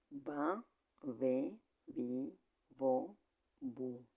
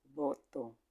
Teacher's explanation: This V is pronounced by putting the teeth on the lower lip, since we must differentiate from the other V that is pronounced by bringing the two lips together.